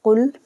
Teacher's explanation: قاف کو موٹا پڑھنا ہے، حروف مستعلیہ ہے، موٹا پڑھا جائے گا قاف لام پیش قل حافظ ہو، بھاری آواز میں پڑھیں گے ہا کو، حالانکہ نچلے والے حصے سے ادا ہوگا ہا پیش ہو، واو لام جبر ول لام کھڑا جبر لا حافظ ہو۔